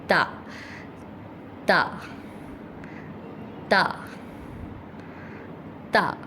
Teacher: تا کے لیے اوپر کے 2 دانتوں پہ ہمیں زبان ٹچ کرنی ہے اور بہت نرمی کے ساتھ کرنی ہے۔ ہم نرمی کے ساتھ کریں گے تو اس میں سیٹی کی آواز پیدا نہیں ہوگی اور یہ نرمی سے پڑھا جائے گا۔